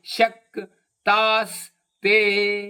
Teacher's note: ಶ ಮತ್ತು ಕ ಮೇಲೆ ಆಘಾತ